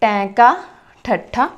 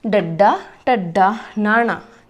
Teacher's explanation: जिन्हां व्यंजनां नूं उच्चारण वेले जिहड़ी साडी जीभ आ ओह उल्टदी आ। जदों तुसीं उच्चारण करके देख सकते हो जिवें कि टैंका ठट्ठा मुड़दी आ उपर नूं, उपरले तालुए नूं छूंदी आ पर मुड़दी आ, उल्टदी आ। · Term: उल्ट जीवी व्यंजन